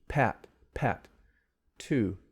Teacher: you can feel it the breath coming out you can see it that's called aspiration the heavy breath the puff of air that comes with stop sounds in english most of the time